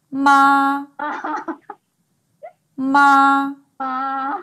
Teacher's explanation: The first tone is pronounced...in the upper range of your normal speaking voice.